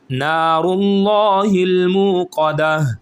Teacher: را کو لام کے ساتھ ملائیں گے تو را بھی موٹا پڑا جائے گا